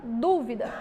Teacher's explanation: a sílaba tônica sílaba mais forte é a antepenúltima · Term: proparoxítona